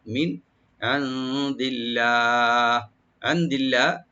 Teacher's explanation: মিন এখানে নুন সাকিন এজাহার করব আমরা, এখানে গুণনা হবে না